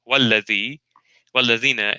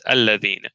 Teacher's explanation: Again, in Surah Tawbah, Surah 9, verse 107, we have in the Hafs another letter, the waw, walladhi, walladhina, and in the Warsh, the waw doesn't exist, it's omitted, and it's alladhina.